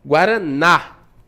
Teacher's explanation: A palavra guaraná, a sílaba tônica é o na, né? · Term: Oxítona